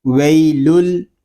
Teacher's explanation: لام کو ہم دوسرے لام کے ساتھ ملا کر پڑھیں گے۔ یہاں پر ادغام یار معلوم بلا غنہ ہوگا۔